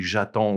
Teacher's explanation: we would run those together because that je ends with E, a vowel, and the next word starts with a vowel